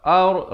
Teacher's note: Ar, ra-nya dibaca tebal.